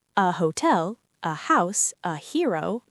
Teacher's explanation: Some students sometimes write an hotel in British English because they've heard some British speakers not pronounce the H strongly. In modern English, both British and American, we typically say a hotel with the H pronounced.